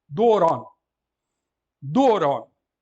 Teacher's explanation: Então, temos aqui uma palavra properspomena, o acento circunflexo na penúltima, que é uma vogal longa, e a última é breve, necessariamente.